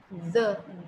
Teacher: So what we do in case of the, आपण मराठी मधला द कसा उच्चारतो, तर आपण आपल्या जिभेचं जे ब्लेड आहे द, ते द जिभेचं ब्लेड आपण दाताच्या वरच्या दाताच्या पाठीमागे टच करतो, पूर्णपणे असं घर्षण करून टच करतो आणि आपण द द म्हणतो.